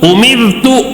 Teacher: را ساکن سے پہلے زیر ہے تو یہاں پہ باریک پڑھیں گے